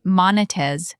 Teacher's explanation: Arabic speakers sometimes drop the final Z sound and say monetez. Make sure you finish the word.